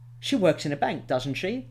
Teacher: uh use question tags she works in a bank doesn't she with a rising intonation and that will make you sound a bit more polite and a bit more uncertain